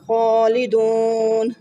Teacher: خالدون، خا کو پر پڑھا، ایک الف یعنی 2 حرکات کے برابر کھینچ کر پڑھا. دون پہ واو مدہ بنا، پھر وقف کی صورت میں مد عارض کیا. اس کو 3 الف یعنی 6 حرکات کے برابر کھینچ کر پڑھا